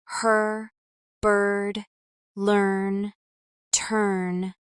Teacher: Americans keep this R sound strong in all positions, unlike some other accents where it disappears at the end.